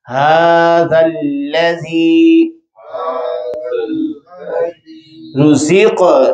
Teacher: یا ساکن، یا سے پہلے زیر اور لام باریک